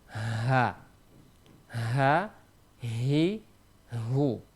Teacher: huruf ha itu di pangkal tenggorokan kita